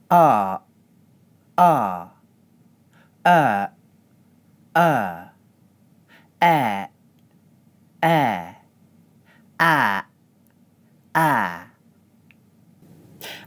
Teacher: when I keep my glottis open at the end of the vowel the sound fades into a breath. When I close my glottis at the end of the vowel the sound stops suddenly.